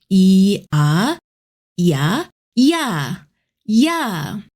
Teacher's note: Think of E as a helper sound. It slides in quickly to connect with the next vowel. Say e softly, then glide into the next sound right after it. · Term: compound vowel